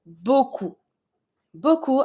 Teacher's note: Beaucoup, I don't pronounce my P.